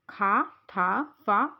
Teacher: इन व्यंजनों के उच्चारण में मुख से अपेक्षाकृत अधिक वायु निर्गमित होती है तथा स्फोट भी अधिक स्पष्ट होता है, जिससे हकार की ध्वनि सुनाई देती है। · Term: महाप्राण